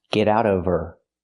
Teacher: Now we need the Vv sound in of because we don't pronounce the H in her. We link the sounds. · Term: the V sound